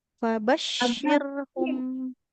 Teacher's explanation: huruf syin tengah lidah ke langitlangit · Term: huruf shin